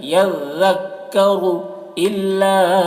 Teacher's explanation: حرف مد کے بعد حمزہ دوسرے کلمہ میں ہے تو یہاں پر مد منفصل ہوگا، مد منفصل کو 3 یا 4 الف کے برابر کھینچ کر پڑھتے ہیں اور 1 الف کے برابر بھی کھینچ کر پڑھنا جائز ہے۔